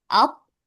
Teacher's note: Huruf mimnya jangan lupa harus ditahan dan didengungkan. Ditahan lebih lama.